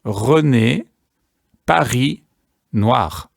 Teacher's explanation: It's a gurgling that takes place in the back of the throat. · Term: French R